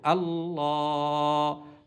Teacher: আর খাড়া জবর খারাজের উল্টা পেশ থাকলে একালিপ পরিমাণ টেনে পড়তে হয়, যেহেতু এখানে খাড়া জবর আছে আমরা এই জন্য একালিপ পরিমাণ টেনে পড়বো